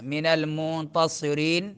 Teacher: रीन में रा बारीक पढ़ेंगे